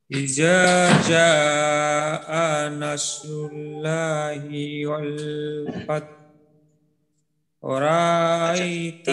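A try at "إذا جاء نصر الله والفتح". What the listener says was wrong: এখানে এখানে কিন্তু আল্লাহ শব্দের লাম মোটা হবে, কারণ আল্লাহ শব্দের মাঝে লামের ডানে পেশ, পেশ থাকলে বা জবর থাকলে মোটা করতে হয়। রুল্লা বলা যাবে না, রুল্ল, রুল্ল। জের থাকলে পাতলা হবে।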